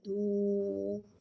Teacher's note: دال واو پیش دو، اور پیش کو بھی ہونٹوں کی گلائی سے ادا کر کے پڑھیں گے · واو کو ہونٹوں کی گلائی کے ساتھ ادا کر کے پڑھیں گے. واو ساکن سے پہلے پیش آ رہا ہے، واو مدہ ہو رہا ہے، لہذا حرف مدہ کو ایک الف یعنی 2 حرکات کے برابر کھینچ کے پڑھیں گے.